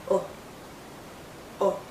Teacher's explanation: is a short vowel sound it's also more a relaxed sound our lips are still rounded but it's not a tight Circle it's a relaxed Circle